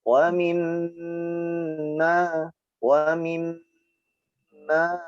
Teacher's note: huruf mim bertasydid dibaca dengung di tekan dan tahan yang lama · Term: mim yang bertasydid